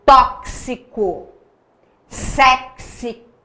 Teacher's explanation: esse X está representando dois sons consonantais. O som do K e o som do S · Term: dífono